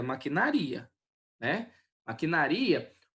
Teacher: o ri é separado do a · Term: hiato